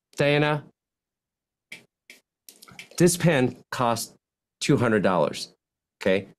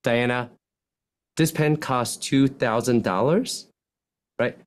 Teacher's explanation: You're asking a question when you have a rising terminal intonation. Whereas if you're sure of something, you have a declining terminal intonation.